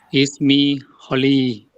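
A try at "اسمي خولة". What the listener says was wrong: Khawlah, bukan Khalil. Khawlah.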